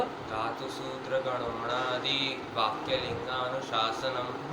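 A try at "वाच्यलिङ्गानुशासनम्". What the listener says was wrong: वाक्य नहीं, वाच्य। वाच्य।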